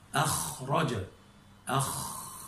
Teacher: لخروج الخاء يندفع الهواء فيمر ما بين الوترين غير زامر لتباعد ما بين الوترين. حتى إذا وصل الهواء إلى الفم اصطدم أيضا، ارتفع أقصى اللسان حتى يكاد يمس أصل اللهاء، فتكونت هذه المنطقة الرخوة وجبر الهواء وكسر وتراجع، لكنه يريد أن يمر فحدثت المزاحمة. · لكن الفرق بين الغين والخاء أن الاحتكاك والمزاحمة مع الخاء أشد ووقعه أخشن وأجف، وهذا ما نلحظه. أخرج، أخ، تسمع احتكاك أشد وخشونة أشد وبها جفاف · كلما زحم الهواء من هذه المنطقة الرخوة وهو يصر ويستمر في الاندفاع، هذه المزاحمة هي ما نسمعها صوت الخاء. لكن الفرق بين الغين والخاء أن الاحتكاك والمزاحمة مع الخاء أشد ووقعه أخشن وأجف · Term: الخاء مهموسة